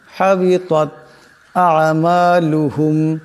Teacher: এখানে মিম সাকিন, কিন্তু গুণা করা যাবে না